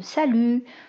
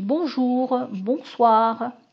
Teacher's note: conséquence de des syllabes accentué donc contre je dis salut donc j'ai tendance à accentuer la deuxième syllabe